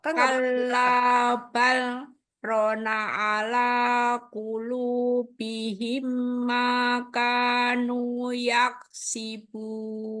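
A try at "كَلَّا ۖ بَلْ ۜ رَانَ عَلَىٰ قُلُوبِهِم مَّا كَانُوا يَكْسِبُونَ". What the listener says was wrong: Iya, ini ada salah satu nih. Ro-nya panjang ini. Rona.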